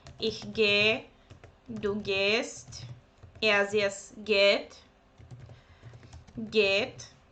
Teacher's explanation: when h stands without c, okay, then it's not pronounced, but you need to prolong the verb